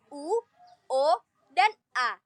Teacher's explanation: vokal yang diucapkan dengan bentuk bibir bulat. Bentuk bibir bulat bisa terbuka atau tertutup. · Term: vokal bulat